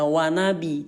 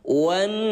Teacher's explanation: Tahap tahan dulu suara nun yang bertasdid ini sampai 2 ketukan.